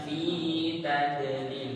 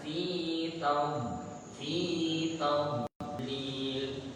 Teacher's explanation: bagian pinggir lidah bagian pinggir menempel di gigi geraham, kemudian ditempelkan sehingga ada muncul sifat istiqalah namanya, memanjang.